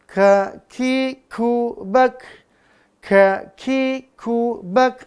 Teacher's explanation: Nah Hames dia napasnya berhembus · Kaki kubak. Ada napas berhembus ya. Maka dia namanya hamas.